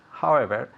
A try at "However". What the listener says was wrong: Yes, muy bien, mejor.